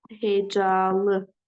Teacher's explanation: Amma mən bunu hecalı dediyimiz zaman artıq hecalı, bunun ikinci hecasında uzanma müşahidə olunur.